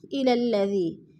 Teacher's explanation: علم تر إلى الذين، إلى الذي، یا ساکن سے پہلے دال کے نیچے زیر ہے تو یا مدہ، یا مدہ کو ایک الف دو حرکات کے برابر لمبا کر کے پڑھنا ہے